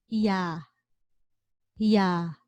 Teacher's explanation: meaning we also add one more sound to the ah sound in this case we're adding the y sound or the u sound before the ah sound